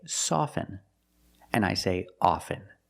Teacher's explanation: With both words, I don't pronounce the T.